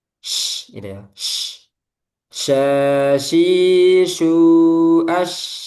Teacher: Shin, dia tafashi. Menyebar di sekitar makhraj. Yaitu makhrajnya di tengah lidah.